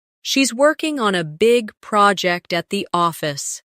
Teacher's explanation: Stress, working, big, project, and office. This will help you speak with a natural English cadence instead of sounding too flat or robotic.